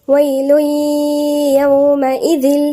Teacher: عشان التنوين وبعده الياء وما فيش شدة، فالإدغام هيكون ناقص، يعني التنوين ده هيبقى بس فيه الغنة بتاعته ما ذهبتش، موجودة الغنة لكن الجسم مش موجود، دخل مع الياء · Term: إدغام ناقص بغنة